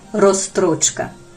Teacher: воно звучить неприродно у нього аж чотири приголосні підряд українська мова жмилазвучна у ній уникають збігу незручних для вимови приголосних